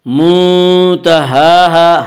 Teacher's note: ہا کے اوپر کھڑا زبر ہے، کھڑا زبر کو ایک الف کے برابر کھینچ کر پڑھیں گے۔ منتہاہا، الف مدہ الف میں شا مدہ ہوتا ہے، الف سے پہلے زبر ہوتا ہے، الف مدہ کو ایک الف کے برابر کھینچ کر پڑھیں گے۔